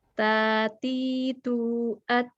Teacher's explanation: tak harokat atau tak sukun tetap ada hamas.